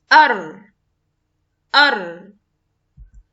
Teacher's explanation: Ra comes from the tip of the tongue with the top of the tip close to the articulation point of the Noon and what lies opposite to it of the gums of the 2 top front incisors.